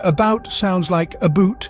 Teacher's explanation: Note the Canadian vowel shift, where about sounds like aboot